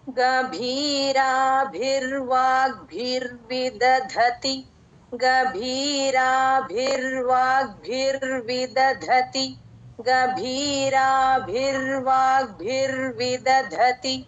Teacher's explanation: మొదటి దకి ఒత్తు రాకుండా ఉంటే ఆ ధతిలో రెండో ధాకి మహాప్రాణం ఖచ్చితంగా వస్తుందండి